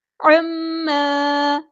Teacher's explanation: میم پہ غنہ زمانی ہو رہا ہے، ایک الف کے برابر ہم یہاں پہ غنہ کریں گے